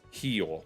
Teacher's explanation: the letter R. Well, it depends on the dialect. I know that within like Brazil it's not Rio, it's he